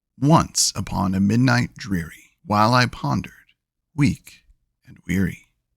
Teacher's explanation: Each foot is a trochee, so the stress is first.